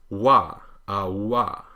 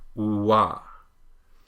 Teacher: The reason it's missing from this chart is because it's an approximant, but it's in 2 different places at once. It's The tongue is raised in the back like the velar approximant, la, but also the lips are rounded in a sort of oo shape, so you get wa. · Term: the English W